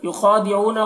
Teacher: خا کو بھی پور پڑھیں گے، یہ حروف مستعلیہ میں سے ہے اور کھڑا زبر ہے، کھڑا زبر الف مدہ کی طرح ہوتا ہے تو اسے ایک الف کے برابر کھینچیں گے۔